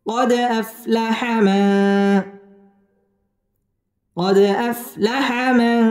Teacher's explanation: দাল কলকলার হরফ এখানে ধাক্কা দিয়ে পড়তে হবে কলকলা করে পড়তে হবে